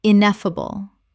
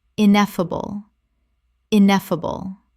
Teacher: 4 syllables with the stress on the second